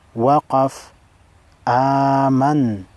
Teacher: نون متحرک ہے، نون کو ساکن کریں گے اور وقف کریں گے اور آواز اور سانس دونوں کو ختم کریں گے۔